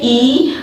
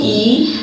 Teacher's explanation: और मध्य यानी कि अग्र स्वर जो हम आगे से बोलते हैं, मुंह के यानी कि जीवा के अगले भाग से बोलते हैं, वो हमारा अग्र स्वर होता है।